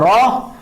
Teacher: एक लुंठित ध्वनि है, और जिसके उच्चारण में जीभ तालु से लुढ़क कर स्पर्श करे